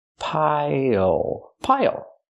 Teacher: use the dark L at the end it changes the vowel